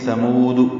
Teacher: ثا کو نرمی سے پڑھیں گے، میم کو 2 حرکات لمبا کریں گے، واو مدہ ہے، دال کو معروف طریقے سے جلدی پڑھیں گے.